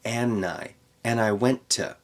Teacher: Almost every time you see and, you're going to take out the d in connected speech.